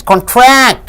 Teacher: So tract, when you stress, it becomes a verb.